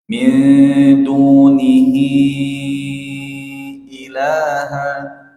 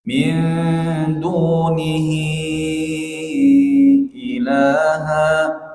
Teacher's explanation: huruf ha dibaca empat ikhwah karena bertemu dengan hamzah. Ya, di situ ada huruf hamzah. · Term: Mad jaiz munfasil